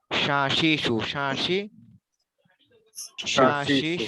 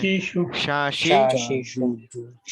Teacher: শিন উচ্চারণের সময় জিহ্বার মধ্যভাগটা এবং তালুর মাঝে একটু ফাঁকা থাকে, বেশি না, সামান্য।